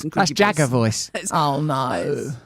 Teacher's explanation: And it's actually holding the vocal folds in a slightly slacker way, so they vibrate differently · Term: creaky voice